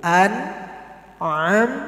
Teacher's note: An'amta, bukan am, tapi hamzah dulu. An'amta, tanpa dipantulkan, semuanya dialirkan.